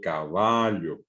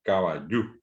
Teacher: O yo digo caballo, palabra llana, y en guaraní caballo, el acento agudo.